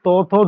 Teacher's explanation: তোমাদের জিহার অগ্রভাগটা দাঁতে স্পর্শ করছে। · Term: দন্ত বর্ণ